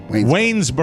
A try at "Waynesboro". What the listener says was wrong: You didn't put the S in. You said Waynesboro.